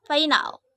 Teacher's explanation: Bunyi F dengan ciri-ciri mati, oral, labiodental, frikatif dengan contoh kata final.